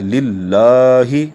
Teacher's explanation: تو لام کے اوپر چونکہ کھڑی زبر تھی اس لیے اس کو ہم نے ایک الف کے برابر کھینچ کر پڑھا